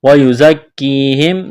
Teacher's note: زا میں سیٹی کی آواز پیدا کریں گے